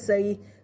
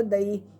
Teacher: یا لین کو بغیر کھینچے بغیر جھٹکا دیے معروف پڑھنا ہے۔ نرمی اور جلدی سے پڑھیں گے، یا لین پر وقف میں کوئی تبدیلی نہیں ہوگی۔